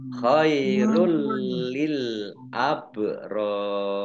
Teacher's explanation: bacaan idgham bila gunnah masuk dengan tidak mendengung. Khairul jadi masuk itu maksudnya ini tanwinnya tidak dibaca tapi langsung masuk ke huruf berikutnya yaitu lam ditandai lamnya ada tasdidnya tetapi tidak mendengung.